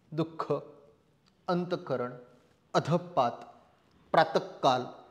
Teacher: विसर्गाचा उच्चार ह या वर्णाला थोडा हिसाड देऊन केलेला उच्चारासारखा आहे